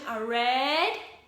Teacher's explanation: Just go with a rising intonation, a red, and count for 5 seconds.